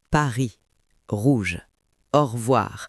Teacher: imaginez que vous avez un peu d'eau dans la gorge, comme quand on se gargarise. C'est dans la gorge, pas sur la langue.